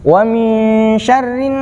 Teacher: Dan nunnya disebut bacaan gunnah. Cara membacanya ialah dengung.